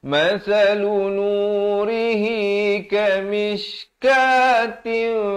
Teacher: ra di sini baris kasrah dibacakan dengan nipis. Masalu nurihi kamishkatin, ka 2 harakat.